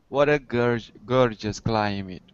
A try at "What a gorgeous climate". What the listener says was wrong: Excellent. Climate. Not meat, but mit. Climate. That's it. Very good.